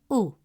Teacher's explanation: Uh two dhamma gives a short uh sound with rounded lips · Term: Dammah